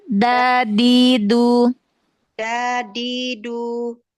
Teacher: Ujung lidah. Tempelkan dengan gusi tempat tumbuh gigi seri atas. Jadi di belakang gigi seri atas, di gusinya. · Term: Makhraj dal